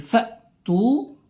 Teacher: hati-hati ya di kata fa'tu ini hamzah harus seketika berhenti karena sifat huruf pada hamzah itu adalah ya yang paling nampak di sini ketika berhenti itu adalah jaharnya, kemudian sifat apanya langsung berhentinya itu syiddahnya ya, sifat syiddahnya.